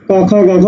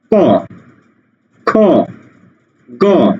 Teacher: জিহ্বার গোড়াটা উপরের তালুর সাথে আটকে যায়। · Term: কণ্ঠধ্বনি